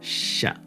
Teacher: the first is sha it's palatal it's basically the same as the english sha sound